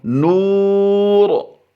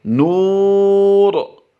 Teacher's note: जैसे नूरुन, रा दो पेश रुन, रा पर दो पेश हों तो रा को पुर ही पढ़ा जाता है, लेकिन वक़फ़ की हालत में भी इसे हम पुर ही पढ़ेंगे क्योंकि रा साकिन आर्जी है।